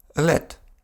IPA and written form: lɛt (let)